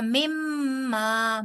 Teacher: मिम मुशद्द का पहले गुन्ना और फिर मा